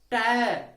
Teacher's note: और जब इनका उच्चारण हम करते हैं तो हम तालु पे जीभ ले आते हैं, जो कि गलत है। हमें इनका उच्चारण करते वक्त जीभ को मूर्धा पर ले जाना चाहिए।